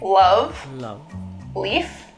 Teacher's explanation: one remarkable feature of this variety is a light L